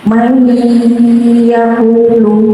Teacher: Di situ ada dom sukun mati bertemu ya. Dibaca bacaan idgham bi gunnah, artinya masuk dengan dengung.